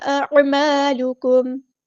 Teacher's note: عین کو وسطی لیکن زور سے ادا کرنا ہے.